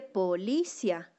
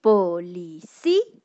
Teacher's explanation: ¿Ven que la vocal débil suena más fuerte gracias a la tilde? Las vocales débiles gracias a la tilde se vuelven fuertes.